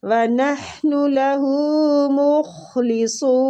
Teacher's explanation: خا بھی پر کرنا ہے اور صاد بھی پر کرنا ہے۔